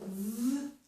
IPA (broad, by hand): v